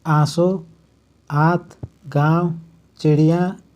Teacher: अनुनासिक के उच्चारण में नाक से बहुत कम सांस निकलती है और मुंह से अधिक